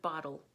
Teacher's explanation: you'll make the L sound, but the T still turns into the voiced D consonant